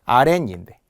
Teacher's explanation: 발음상에서 시옷이 니은으로 발음이 나죠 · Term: 니은 소리가 덧난